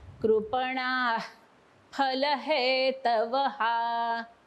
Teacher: बघा कृपणानंतर विसर्ग आहे तो सोडायचा आहे.